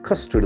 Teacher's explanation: The accent falls in the first syllable.